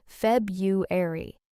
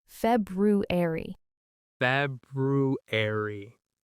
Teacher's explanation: So, the thing is, a lot of people say Feb-u-ar-y, and actually even many native speakers say it that way informally. But the more careful, correct pronunciation is Feb-ru-ar-y, with a clear r sound in the middle.